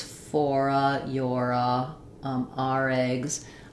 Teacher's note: I'm going back and forth and connecting and linking that R to the next word.